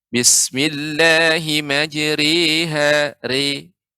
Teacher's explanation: huruf ro dibaca dengan tarqiq, yaitu dibaca dengan tipis. Bismillahi majriha re, tipis.